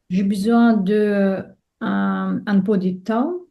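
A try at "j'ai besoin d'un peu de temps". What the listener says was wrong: D'un peu et tout ensemble. Donc ici, tu vois un peu de temps. Un, c'est la voyelle. It's a vowel. Un. Un.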